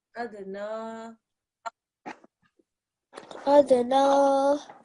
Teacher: This dal sakin here is also a qalqala letter, okay? So this would also be a slight bounce.